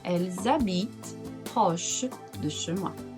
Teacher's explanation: Ela mora perto de minha casa. Ou elles habitent, já que o H não pronuncia, então vai ter o som de Z. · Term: liaison